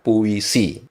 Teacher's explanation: penyebutan huruf U dan I-nya itu terpisah, tetapi tidak terpisah dengan tegas. Seperti saya mengatakan puisi, seharusnya puisi.